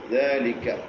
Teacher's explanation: കാഫ് പറയുമ്പോൾ ഇമാല എന്ന് പറയുന്ന ഒരു സിഫത്തുണ്ട് കാഫിന്. കാ പറയൂല, അല്പം ചെരിച്ചിട്ട് ക എന്നേ പറയുള്ളൂ.